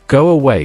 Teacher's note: go away where an unexpected glide appears. These aren't pronunciation errors.